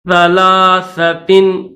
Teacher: تو سا پر زبان کو تھوڑا سا باہر نکالیں گے